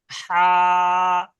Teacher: পুরো গলার মধ্যে উচ্চারণ হবে, গলার মাঝখান দিয়ে